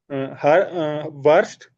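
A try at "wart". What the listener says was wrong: एस टी नहीं, सिर्फ टी। एस नहीं लगाना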